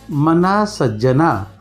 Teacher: थोडक्यात उच्चार करतो. म ना लांबवतो, दीर्घ आहे म्हणून यू आले मच्या खाली म्हणजे लघु आणि नच्या खाली डॅश आले म्हणजे गुरु.